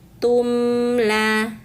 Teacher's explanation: dibaca jelas tidak didengungkan ya. Caranya rapatkan bibirnya. Tumla. Nah, itu cara membaca mim sukun.